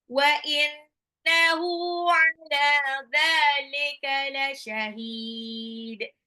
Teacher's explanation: karena diwakafkan dalnya berubah menjadi qalqalah · Ala dzalika lam sama dzalnya matobi'i dua harokat